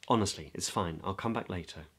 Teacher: And can you tell I'm in the sort of low to low mid part of my voice? And there's a low volume. I guess that's partly to do with embarrassment and but not really wanting to project your voice.